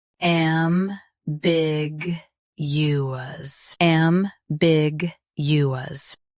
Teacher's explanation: Stress big. Keep you clear and finish with us.